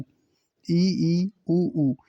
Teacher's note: संवृत स्वर यानी मुंह बिल्कुल बंद रहता है बहुत कम खुलता है न के बराबर खुलता है